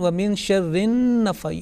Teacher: Here the nasal sound has been compromised because the noon gunna has not been properly articulated and observed, because you wanted to complete hasad.